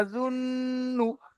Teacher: নু টান দিচ্ছেন কেন? গুন্না হবে আজুন নু। ইয়াজুন নু, হ্যাঁ, তারপরে পড়েন।